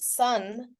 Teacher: the a is actually said as a uh sound